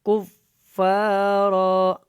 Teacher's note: پہلے کاف کو فا کے ساتھ اچھی طرح ملانا ہے. کفارا، اور یہاں پہ وقف ہو جائے گا.